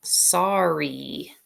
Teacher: Do you hear the long E sound at the end of this word spelled with a Y?